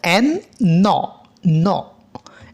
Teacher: এখানে 3টি নাজাল stop sound রয়েছে দ্যাট অল আর ভয়েসড, যেগুলো সবগুলো ঘুষধ্বনি অর্থাৎ আমাদের যেটা ভাইব্রেট করে বের হবে।